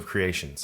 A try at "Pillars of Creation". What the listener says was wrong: Pillars of Creation. No S at the end of creations.